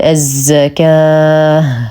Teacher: التاء المربوطه ووقفا نقف عليها بهاء ساكنه فنقول الزكاه مع اعطاء المد العارض للسكون حقه اثنين اربع ست